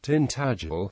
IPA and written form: tɪnˈtædʒəl (Tintagel)